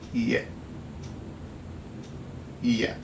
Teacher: Or add at the beginning an alveolar click with unreleased velar co-articulation. Creaky voiced, long alveolar glide with mid-front unrounded vowel and glottal stop.